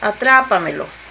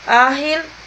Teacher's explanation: Llevan el acento antes de la antepenúltima sílaba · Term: Palabras sobre esdrújulas